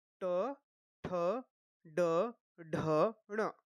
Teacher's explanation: तो ये जो ट वर्ग है इसका उच्चारण स्थान हो गया मूर्धा